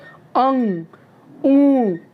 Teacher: तो आधी हवा जो है वो नाक से होते हुए, नाक के छिद्र से होते हुए आधी श्वास चली जाती है, आधी मुंह से होते हुए। तो दोनों तरफ से ध्वनियाँ आती है, नाक के ओर से भी और मुंह से भी। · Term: अनुनासिक